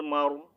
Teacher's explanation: اب یہاں پر را کو موٹا پڑھیں گے، کیوں کہ را کے اوپر جو ہے جزم سائن ہے اور اس سے پہلے جو لیٹر ہے وہ اس کے اوپر زبر ہے، ٹھیک ہے. اگر یہاں میم کے نیچے زیر ہوتی تو را باریک تھا، لیکن زبر پیش، ٹو زبر، ٹو پیش، کھڑا زبر الٹا پیش آ جائے گی.